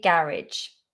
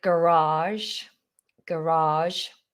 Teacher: I think in America they say garage, garage. They pull out that second vowel